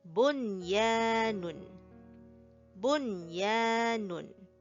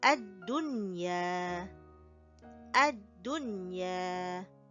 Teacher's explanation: notice that we do not make any merging, and we do not make any ghunnah. So these are the 4 exceptional words that does not have the rule of idgham bi ghunnah applied to it. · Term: idhar mutlaq